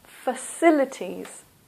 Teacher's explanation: the stress is here in the second syllable